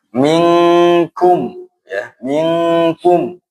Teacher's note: Kalau bertemu qaf atau kaf maka bunyinya ng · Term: ikhfa